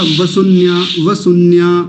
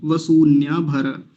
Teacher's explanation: बड़े ऊ की मात्रा है, दीर्घ ऊकार है तो लंबा खींच के बोलेंगे उसको